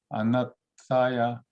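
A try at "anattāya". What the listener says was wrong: Ah, very good.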